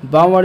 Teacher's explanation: ये जो है अल्प प्राण अक्षर है और ये जो है ओष्ठ वर्ण है